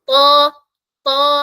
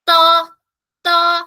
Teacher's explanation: ഇവിടെ കുറയും ദ ട ദ ത് പറയുമ്പോൾ ഒന്നുകൂടെ പ്രസ്സിങ് കുറയും പക്ഷേ നമ്മൾ നാവിന്റെ ബാക്ക് സൈഡ് ഉയർത്തി പറയണം എന്നാലേ ആ ഹെവി സൗണ്ട് വരുള്ളൂ